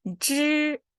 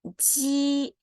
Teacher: the only difference is when you say 知, your tongue is curled up. When you say 鸡, your tongue is saying down.